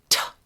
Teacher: you could feel that air hitting your hand when you said t